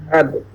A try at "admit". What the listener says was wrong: You said that the stress mark occurs in the second syllable, but when you say admit, that's not correct. Since most verbs, the stress marks in verbs occurs in the second syllable.